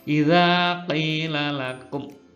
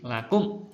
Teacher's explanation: Namanya izhar, bacanya harus jelas, menahan nafas 1 detik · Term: izhar syafawi